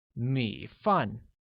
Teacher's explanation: has a falling rising tone on I and a falling tone on A, making it 米 饭.